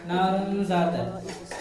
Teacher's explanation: تنوین کی آواز کو ناک میں چھپا کر غنہ کے ساتھ پڑھا ہے